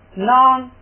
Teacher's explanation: 来的搭来这个代表卡撒。所以你看到这个兔后边卡就等于是后边是卡撒，就这意思。这个这样的话呢，出价，先读前两个出价，后边那个词儿注意听读音啊，是▁non，▁ 要读高调，读平声，高平调 。为什么呢？因为拿拿麻是4个鼻音，鼻音如果有了上加字前加字，就要读成高平调。这又复习一个，4个鼻音有了前加字上加字要读高平调，所以呢它要读▁non。那这个拿什么时候才读低声呢？前边没东西它才读拿，前边一有东西，上边一有东西就拿，记住就读成拿。出家囊什么意思呢？这个出家是这个出家就是保重、爱护、爱惜。这个囊呢也是一个这个动词，也是做的意思，但是它是动词的敬语，就是就是这个就是把这个动作呢变成了这个就是或者是尊者圣者做的用